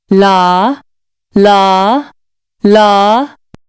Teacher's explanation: For la, tongue tip moves forward and touches the spot behind your teeth. Lips are relaxed.